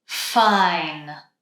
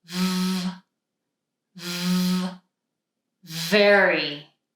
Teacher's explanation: in this case, we're using the top teeth and the lower lip.